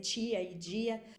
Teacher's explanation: >> Isso faz com que as consoões que vem antes, no caso T e D, sejam palatalizadas. Na prática, o som delas muda e fica meio chiado.